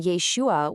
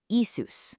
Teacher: the sh in Yeshua was swapped out for an s sound. Step two, Greek masculine grammar generally requires adding an s suffix to the end of a name to show its case in a sentence.